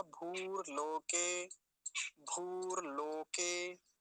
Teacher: और जो मैं हमेशा से कहता आया हूँ, इसको भूर लोके जल्दी से नहीं बोलेंगे, जैसे भूर भुवः में वो भुवः आता है ना, तो भुवः जल्दी से बोला जाता है, क्योंकि उस पर ह्रस्व उकार होता है। यहाँ पर दीर्घ उकार है, तो इसको लंबा ही खींचेंगे